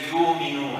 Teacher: Warsh doesn't pronounce the Hamza